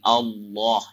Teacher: Naikkan ujung lidah tuh ke langit. Allah supaya tebal dia. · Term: ditebalkan